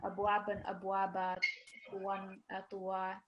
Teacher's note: fathatain, it basically takes 2 seconds of prolongation